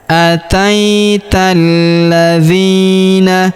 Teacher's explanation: huruf dzi kita panjangkan dua harakat karena terdapat ya sukun di depannya